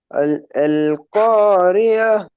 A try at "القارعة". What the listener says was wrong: அல்காரி ஏ தான் வருது, ஆயின் வரல. ஆயின் உச்சரிக்கும் தொண்டையால. அந்த அல்காரியா ஆயின் உச்சரிக்கணும் எங்க? ஆயின் எங்க உச்சரிக்கணும்?